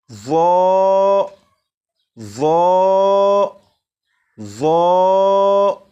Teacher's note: اب اسے پڑھتے ہوئے 2 باتوں کا خیال رکھیں گے۔ نمبر 1، زبان دانتوں سے بھی لگے۔ نمبر 2، آواز کو بھی موٹا کر کے پڑھیں گے۔